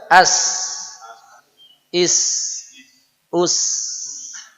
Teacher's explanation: Dia ada pergerakan suara. Suara as itu bisa bergerak panjang. As sampai lama pun bisa. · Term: rokhawah